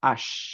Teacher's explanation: similarly শিন যেখানেই থাকুক না কেন যেকোনো ওয়ার্ডেই থাকুক না কেন তার বিগিনিং যখন হচ্ছে শিন দিয়ে তার সামনে যদি আমরা আল নিয়ে আসি তাহলে আমরা পড়বো আশ আমরা একচুয়ালি আল পড়বো না